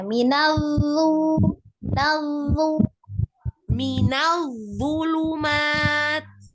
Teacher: Huruf dha-nya roghah. Mengalir suaranya.